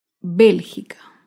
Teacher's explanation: Bélgica se acentúa en la antepenúltima sílaba. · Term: palabra esdrújula